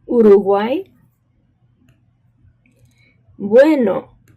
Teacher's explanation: So the vowel U, when it sits by another vowel, for example, in this case, the U and the A at the end are next door to each other, right? That means we're going to pronounce that combination of UA kind of as one sound. This is called a diphthong in linguistic terms.